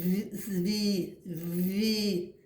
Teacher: звук в який м'який